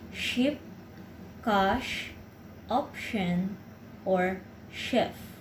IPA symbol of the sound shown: ʃ